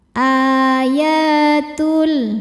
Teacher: Ayatul ya hukumnya mad thobi'i zohiri. Sebab ada ya berharakat fathah panjang. Cara bacanya panjang dua harakat.